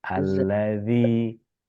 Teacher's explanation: Bukan pakai zai, tapi pakai za. Allazi. Oh ya. Gigi atas ketemu sama lidah ujung.